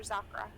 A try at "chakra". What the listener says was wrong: it's actually chakra. The X in Akivan has an SH sound.